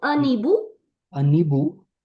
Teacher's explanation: n has to connect with the H because that's liaison